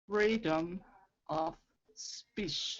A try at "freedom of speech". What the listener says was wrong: Yeah, speech. yeah, you want to go cha-cha-cha at the end. It's a CH, so it's freedom of speech, cha-cha, not shh, cha.